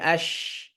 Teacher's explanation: মুখের জিহ্বার মধ্যভাগ ও মুখের তালুর মধ্যভাগ থেকে